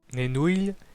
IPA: ne'nuʎ